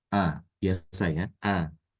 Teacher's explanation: Hamzah yang pertama dibaca biasa dikeluarkan makhrajnya dari tempat makhraj Hamzah itu sendiri yaitu di pangkal tenggorokan